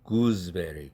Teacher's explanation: 그때 베리가 브가 유성음이죠. 그렇게 되면 앞에 있는 구스 할 때 스라는 철자는 z로 바뀐다. 뒤에 브라는 유성음 영향을 받아서. 그래서 이 단어는 구스베리라고 발음하지 않고 구즈베리 이렇게 발음한다는 사실입니다. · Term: 유성동화